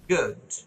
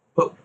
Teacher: ও, হ্যাঁ, ঠোঁটটা একটু গোল হবে, ঠোঁটটা গোল হবে, উ উচ্চারণে ঠোঁটটা গোল হবে।